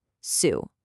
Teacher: as you're making the s sound at the beginning, your lips are already rounding up, getting ready for the ooh sound. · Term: co-articulation